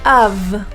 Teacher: You're biting your bottom lip and adding your voice. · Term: V pronunciation